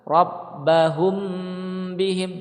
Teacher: di sini ada mim mati bertemu dengan ba, maka dia ikhfa syafawi ya. Dia ada gunnahnya ya, ada dengungnya